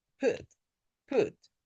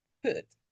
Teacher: This is a short rounded sound.